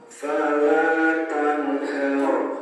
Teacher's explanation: Huruf la di sini dibaca panjang satu alif atau dua harakat. Kemudian ada nun sukun bertemu dengan huruf ha. Ini merupakan bacaan izhar. Jadi harus dibaca jelas.